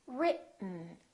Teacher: Just move your tongue forward to go directly to the N. This E kind of disappears. It's not pronounced. So it's basically the T and the N that are next to each other.